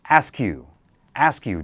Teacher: So combine the K and the Y sound.